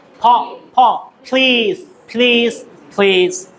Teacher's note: আমরা বলবো প্লিজ, দুই ঠোঁট একসাথে